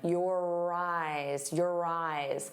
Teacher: notice how your and eyes link together. You're going to hear that R sound. On both sides of the word if we link them your eyes, your eyes.